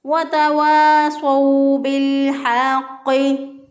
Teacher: बिलहक़्क़ि, हक़्क़ि, हा को वस्ते हलक से अदा किया, और क़ाफ जो है इसको कव्वे के पास से ज़ुबान की जड़ ऊपर के तालु के साथ लगाएं तो क़ाफ अदा होता है, और चूँकि उसके ऊपर शद भी है तो इसको मजबूत क़ुव्वत से पढ़ेंगे।